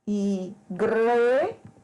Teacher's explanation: a sílaba mais forte, pronunciada, é a sílaba gre.